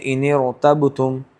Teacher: جب نون ساکن ہوگا تو یہاں نون ساکن کو زیر کی حرکت دے کے پڑھا جائے گا